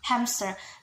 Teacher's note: sometimes we hear p sound in word hamster